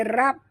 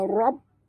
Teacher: ra tebal. Jangan baca rab, tapi baca rob ya.